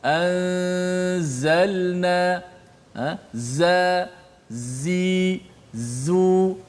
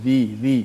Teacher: huruf zai yang ada sifat safir ni, dia berbeza dengan huruf dhal